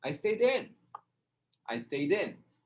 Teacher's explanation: Stayed, ou seja, como não pronuncia o E, o D vai para frente, vira stayed in